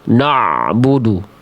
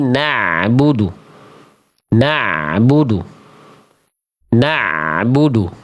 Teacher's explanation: Ain itu sifatnya ya karakternya tarkik. Apa itu tarkik? Dibaca dengan tipis atau suara yang ringan.